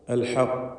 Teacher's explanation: ഖാഫിൽ ഖൽഖല കുബ്ര നൽകി വ്യക്തമാക്കി ശബ്ദം ചലിപ്പിച്ചുകൊണ്ട് സുക്കൂൻ നൽകി വഖഫ് ചെയ്യണം. ഖാഫിന് തഫ്ഖീമും നൽകേണ്ടതാണ്.